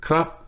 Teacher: krap at the end with a high tone, right? You can see how that points up.